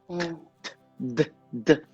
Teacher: A minha língua está atrás do dente. · O som do T e do D é um fonema dental.